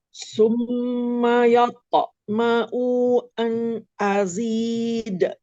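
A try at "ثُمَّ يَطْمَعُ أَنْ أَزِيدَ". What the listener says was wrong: Oke, sekarang di ayat ma'unya dibaca pendek ya, Prof ya. Summa yatma'u an ma'an gitu.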